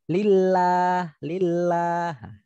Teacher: setelah li, lafadz Allahnya diucapkan dengan ringan gitu ya. Lillah, tidak ngoyo, santai gitu ya. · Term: tarkik